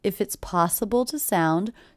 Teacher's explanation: the word two is definitely reduced to the schwa